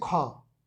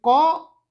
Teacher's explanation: जब ख बोलते हैं तो ज्यादा वायु निकलता है मुंह से। तो जब ज्यादा वायु निकलेगा वह हो जाएगा महाप्राण।